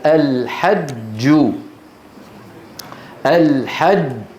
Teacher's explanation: فالجيم الساكنه المدغمه مثل الحج مقفوله تماما